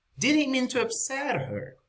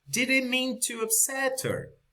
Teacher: we don't pronounce the h after the upset